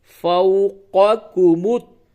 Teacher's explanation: یہ واو لین ہے، واو ساکن سے قبل زبر ہے، یہ واو لین ہے نرمی کے ساتھ